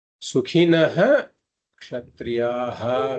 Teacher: before a Ksha, if there is a Visarga, then we pronounce that Visarga fully